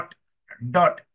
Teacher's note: D with the dot below as in dot dot that mean d is a little bit uh retroflex